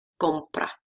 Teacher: we still have to stress it in the first syllable